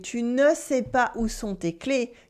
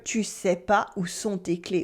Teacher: the ne almost always gets dropped so that we can speak French faster. So that instead of hearing tu ne sais pas où sont tes clés, you would hear tu sais pas où sont tes clés. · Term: drop the ne